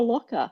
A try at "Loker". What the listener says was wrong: Loker. There's no C, so it's not Locker.